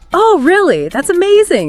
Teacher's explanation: short, rising intonations show you're listening.